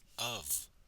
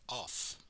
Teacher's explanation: in the word of, the F should sound like a V. And some people make this word sound like off.